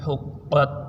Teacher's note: یہ ہا بریک ہے، قاف موٹا ہے